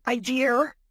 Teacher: adding an R where there isn't an R, as in idea